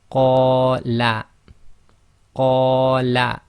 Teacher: So that's 2 long on the qa, and la is 1 long.